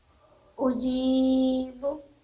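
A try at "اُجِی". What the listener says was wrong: नहीं, अब उजी तक ही पढ़ना है, उजी। आवाज दब नहीं रहा है,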